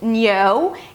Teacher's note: It's an /n/ sound, and then the /o/ as in go